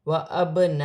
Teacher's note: الف مدہ بھی بن رہی ہے، بڑی مد بھی ہے، مد متصل، دونوں کو ملا کر 6 الف کی مقدار کھینچ کر پڑھا جائے گا